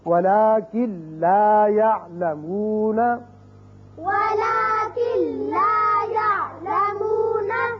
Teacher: اب پہلے ہے لام، لام کی مثال نون ساکن کے بعد وَلَٰكِن لَا يَعْلَمُونَ، وَلَٰكِن لَا يَعْلَمُونَ، اب کن لا نہیں پڑھیں گے بلکہ کاف سیدھا لام سے ملے گا، نون کی آواز پیدا یہاں نہیں ہوگی، یعنی غنہ نہیں ہوگا. وَلَٰكِن لَا وَلَٰكِن لَا يَعْلَمُونَ، يَعْلَمُونَ، را کی مثال نون ساکن کے بعد اب نون نہیں پڑھا جائے گا، میم را سے ملے گا. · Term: ادغام بغیر غنہ